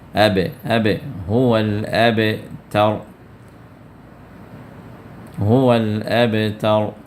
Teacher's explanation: کو جزم آ گیا اور با حروف قلقلہ میں سے ہے، تو لہٰذا یہاں پر آپ قلقلے کے ساتھ پڑھیں گے، تھوڑا سا حرکت دے کے آپ پڑھیں گے